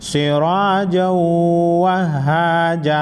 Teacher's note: تنوین کے بعد حروف یرملون میں سے واو ہے غنہ کے ساتھ ادغام ہوگا